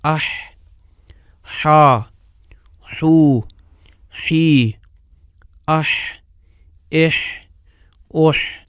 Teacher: دیکھیں حرف حا میں زبان کا وہ انتہائی حصہ جو غذا کو سانس والی نالی میں جانے سے روکتا ہے، تھوڑا سا پیچھے کو جاتا ہے۔ اس قدر پیچھے نہیں جاتا کہ جس مقدار میں عین کے لیے پیچھے جاتا ہے۔ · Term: حا کا مخرج